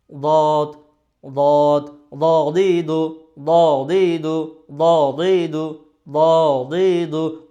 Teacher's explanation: জিহ্বার গোড়ার কিনারা উপরের মারি দাঁতের গোড়ার সঙ্গে লাগায় উচ্চারিত করতে হবে।